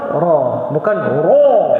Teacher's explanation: Kalau ra dia tebal saja, tetapi dia tidak terangkat lidah dia sebab dia ada sifat takrir. Ra. Jadi dia tak boleh ra memang tak boleh jadi itbaq.